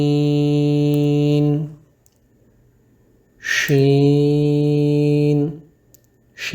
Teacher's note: شین کو پڑھتے ہوئے آواز منہ میں پھیل جائے گی